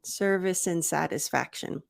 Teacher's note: I reduce the D and I make a smaller mouth sound for the a